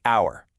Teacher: Yeah, it starts with the letter H, but that H is totally silent. The first sound you actually hear is ow, which is a vowel sound.